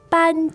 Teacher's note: now that sounds like two first tones